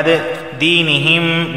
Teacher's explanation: میم ساکن کے بعد ایک اور میم آیا ہے تو یہ ادغام میم ساکن کا قاعدہ لاگو ہوگا، یعنی یہاں بھی غنہ ہوگا